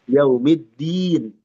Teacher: dal dan ta ini satu makhraj dia rawan tertukar